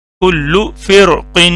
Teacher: حروف مستعلیہ میں سے ایک لفظ آ گیا، تو یہ را بھی موٹی ہوگی